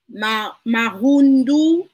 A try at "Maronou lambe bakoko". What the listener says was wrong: Maronou. Not ndu. C'est nous. Maronou lambe bakoko.